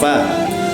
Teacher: keluar dari dalamnya bibir yang bawah serta menempati dengan ujung gigi seri atas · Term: huruf fa